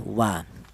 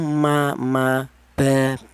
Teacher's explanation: Walaupun sama keluarnya huruf berasal dari kedua bibir, akan tetapi untuk huruf wawu ini dihasilkan dari kedua bibir yang renggang, akan tetapi untuk huruf mim dan huruf ba dihasilkan dari kedua bibir yang rapat